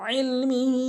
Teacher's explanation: এবং তানবিনের আরেকটি নিয়ম রয়েছে, মিন ইলমিহি, অধিকাংশ লোক যে ভুলটি করে সেটি হচ্ছে ইলমিহি বলে, হামজা এনে উচ্চারণ করে, আমরা আইন এনে উচ্চারণ করব, আইনটি হলকের মাঝখান থেকে ইলমিহি, হা অবশ্যই 3 আলিফ টানবো উপরে এই ঢেউ চিহ্ন হওয়ার কারণে।